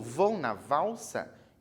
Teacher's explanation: esse L do valsa tem som de U